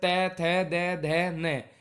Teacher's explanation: ऊपर के दांतों पर जीभ लगने से जिनका उच्चारण होता है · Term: दंतीय